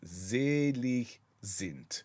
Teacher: in German the S is a z sound and the D on the end of this is a t sound